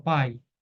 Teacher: o a é vogal o i semivogal porque o a é forte né e o a sempre será vogal aí um exemplo aqui